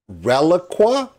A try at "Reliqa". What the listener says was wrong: Reliqa. Hard Q. Yep. No U.